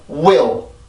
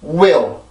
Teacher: 빨리 내가 몸으로 옮겨가서 몸의 소리가 두 개가 연속으로 우위 이렇게 따로 떨어지는 게 아니라 하나의 소리처럼 들리게 하는 역할을 하는 게 전이음인데, 반드시 길어서는 안 되고 아주 짧게 소리가 올라가야 되죠